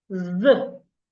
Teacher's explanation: How do you articulate the sound? Stick out your tongue, put your tongue in between your upper teeth and your lower teeth, and this time make vibration. Let your vocal cord vibrate.